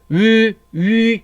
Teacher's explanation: 표준발음법 제4항에 의하면 이 위는 원칙적으로 단모음입니다. 그래서 입술이 바뀌면 안 돼요. 입술의 형태가 바뀌면 안 됩니다.